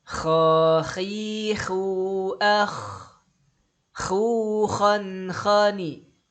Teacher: Huruf kha makhrajnya ada di atas huruf H. Kalau H tengah tenggorokan, kalau kha di atasnya ya.